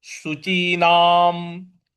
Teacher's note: न के ऊपर जो अनुस्वार है उसका म उच्चारण ले आएंगे